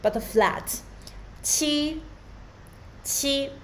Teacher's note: It's the first tone. Qi, high but flat.